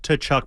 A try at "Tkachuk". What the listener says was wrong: We don't pronounce the T. Silent T. Tkachuk.